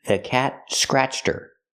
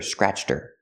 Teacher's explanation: Not scratched her, but scratched her. Her is not a stressed word, so the H is silent. You hear scratched her.